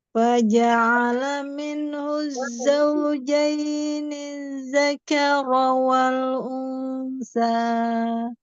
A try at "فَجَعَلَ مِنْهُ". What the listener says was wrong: Faja'ala masih kepisah Umi. Faja'alanya belum nyatu. Masih faja'ala.